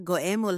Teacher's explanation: Maaari itong bigkasin na parang we na may pinagsamang labi. Halimbawang salita goemol halimaw, nangangahulugan ng nakakatakot na nilalang.